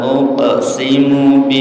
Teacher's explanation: ada pantulannya kemudian nunnya ditahan bacaan gunah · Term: Qalqalah